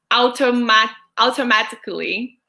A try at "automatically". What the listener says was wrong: Automatically. It's more the sound of an O at the beginning. No, like you have the soft O and the short O versus the long. And so automatically, instead of ow.